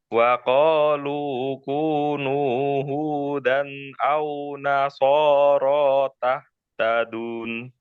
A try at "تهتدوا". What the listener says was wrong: tahtadu. Nggak ada nunnya ya. Tahtadu.